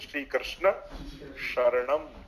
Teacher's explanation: મંત્રમાં જયારે તમે દંત્ય સ કે તાલવ્ય સ એનું પણ ઉચ્ચારણનો વિવેક રાખો. તો શ્રી કૃષ્ણ શરણમ તાલવ્ય સ આવે, સ નહીં.